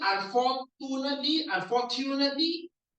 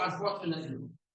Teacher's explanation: for some reason, this TU is actually a CHU